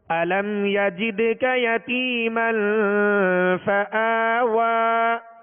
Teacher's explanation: قلقلہ کریں گے ماشاءاللہ، اس لیے کہ یہ دال حروف قلقلہ میں سے اور ساکن ہے